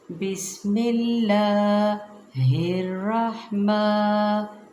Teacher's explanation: را کو پور پڑھیں گے، ہا کو نرمی سے باریک ٹھنڈا پڑھیں گے، مقدار پوری کریں گے